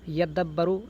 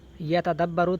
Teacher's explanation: تو تا اور دال کی ادائیگی تقریباً ایک ہی ہے، تو لہذا یدبروا حقیقت میں یتدبروا تھا، فادغمت التاء فی الدال، تو تا کا دال میں ادغام کر دیا گیا، تو لہذا یدبروا ہو گیا۔